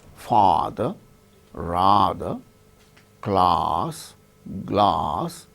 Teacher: we say Oh as in father rather class glass like that the tongue goes down then cavity is totally open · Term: half open